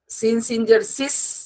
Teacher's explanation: বাতাস বের হবে, কিন্তু সেক্ষেত্রে একটা সিটির ন্যায় সিনের মধ্যে আওয়াজ থাকবে। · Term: সিনের উচ্চারণ